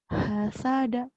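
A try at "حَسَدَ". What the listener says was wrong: Hanya hasada nggak desah.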